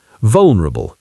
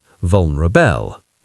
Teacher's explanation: What's more important here is the suffix. It's the weak schwa sound, not the strong diphthong a.